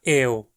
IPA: eʊ̯